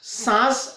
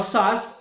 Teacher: अर्थात सांस और सास ये दो शब्द है, चंद्र बिंदी वाला सांस अनुनासिक है और सास जो है वो निरोनासिक है